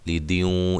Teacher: یہاں نون تنوین کا ادغام مع الغنہ ہے